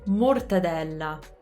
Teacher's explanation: we have double L's, so we have to hold the L's a little bit.